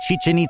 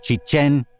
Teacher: the name is Chichen accented on the second syllable